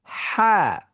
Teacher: হা উচ্চারিত হওয়ার সময় তার একটু সংকুচিত জায়গা আছে, এই জন্যই তার সাউন্ডের মধ্যে কিছুটা ওই যে ফিস ফিস সাউন্ড পাওয়া যায়।